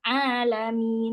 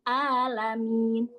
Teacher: Contohnya kalau di surah Al-Fatihah di alamin harusnya ain yang keluar alamin malah yang keluar alamin. Huruf ain diganti dengan huruf hamzah. Nah, itu perubahan huruf dengan huruf.